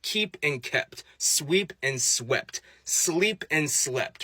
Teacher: a T is unvoiced with less vibration, but it's both made in the same area in your mouth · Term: devoicing process